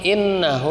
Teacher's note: innahu ini gunnah karena tasdidnya tasdid asli